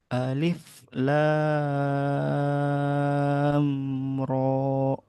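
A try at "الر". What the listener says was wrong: Nah, roknya masih ada hamzah. Ro. ro gitu di udara ro.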